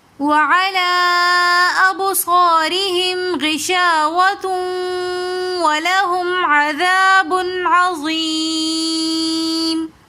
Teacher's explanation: وعلی ابصارہم یہاں پر مد منفصل ہو رہی ہے تو اس لیے ہم اس کو 3 الف کی مقدار کھینچ کر پڑھیں گے